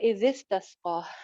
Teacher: अच्छा जी आगे चलते हैं, वो इजिस तस्का, जाल अगेन आ रहा है और साथ ही सीन भी है, तो यहाँ इसका ख्याल रखें कि जाल में सीटी नहीं है और सीन में सीटी है।